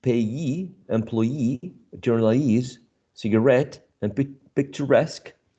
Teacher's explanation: the stress syllable is the one which is the suffix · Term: primary stress